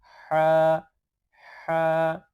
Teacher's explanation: হলুকের শেষ ভাগ হইতে উচ্চারণ করতে হবে।